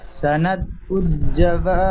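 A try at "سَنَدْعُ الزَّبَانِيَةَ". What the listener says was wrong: সানাদউ জাবা, জা, এই জা অক্ষরটি জিমের মতো উচ্চারণ হয়ে গিয়ে জাবানিয়া হয়ে গেছে। সানাদউ জাবা, জা, সিটি মারার মতন আওয়াজ হবে, জা।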